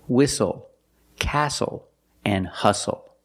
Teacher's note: The T is silent with the spelling pattern S-T-L-E.